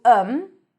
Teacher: tell him because him is reduced to him and sometimes even to um okay so sometimes we don't even pronounce the I sound but just like um so him can be pronounced as um